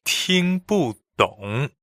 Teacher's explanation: So 听 is first tone, 不 is fourth tone, and 懂 is third tone.